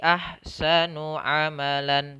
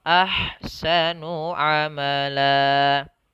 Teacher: Mad iwad yaitu mad yang asalnya adalah fathatain mengganti nanti menjadi, misalnya kalau di sini lan, nanti misalnya lan ketika berada di akhir bacaan, maka dia berubah menjadi la, menjadi dua harakat saja panjang. Maka di sini bukan lagi ahsanu amalan, tapi ahsanu amala.